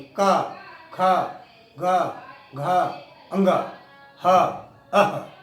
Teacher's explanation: जब का कहेंगे तो कंठ में आवाज टकराती है।